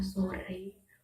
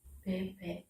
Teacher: vokal E adalah vokal sedang depan. Vokal E mempunyai 2 alofon, yaitu E dan E.